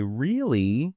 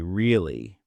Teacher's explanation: If you say really with a high rising tone, it sounds surprised. But if you say really with a low falling tone, it sounds doubtful. Same word, different music. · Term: intonation